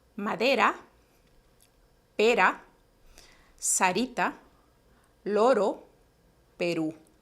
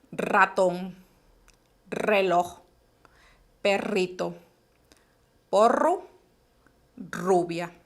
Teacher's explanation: se produce también en el mismo lugar en los alveolos solo que tienen que vibrar lo tienen que hacer más vibraciones tiene que mover más la lengua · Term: vibrante múltiple